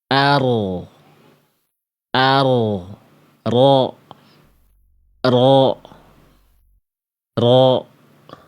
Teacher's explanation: Jadi yang nempelnya itu bukan ujung lidahnya banget, tapi punggung lidah kita. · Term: huruf ro